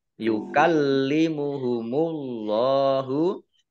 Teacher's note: yukallimuhumullahu, lamnya dibaca double, ada tasdidnya. Kemudian Allahnya dibaca tebal karena harokat di depannya dhammah.